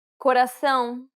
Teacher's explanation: It's the tilde accent, indicating that the vowel is meant to be pronounced with nasality.